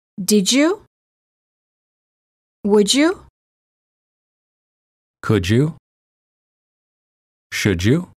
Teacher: D+ Y is usually pronounced as J as in joke